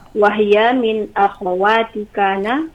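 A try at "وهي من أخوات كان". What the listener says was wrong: Akha ya, akhawat bukan akhwat. Ya, itu salah ya.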